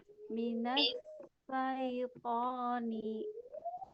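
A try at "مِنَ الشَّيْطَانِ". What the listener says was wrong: Nanti mungkin di huruf shinnya bisa dilatih lagi ya, diulang-ulang ya. Sya, shi, shu.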